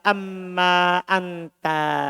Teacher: Jadi diidgham nun ke mim.